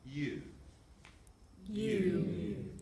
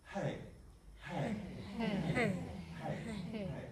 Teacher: on the simultaneous onset there's hardly any breath coming through, but the aspirate onset really is quite fluffy